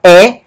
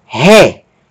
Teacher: aspiração forte aspiração forte e lan altera a pronúncia da vogal no lugar de pronunciar é nós vamos pronunciar ré por causa da aspiração forte